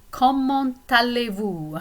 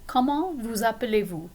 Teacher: I pronounce my T at the end of comment because it links up with aller right after